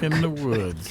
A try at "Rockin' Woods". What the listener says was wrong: You said it wrong. There's no the. It's like Pat and Ed. Rockin' Woods.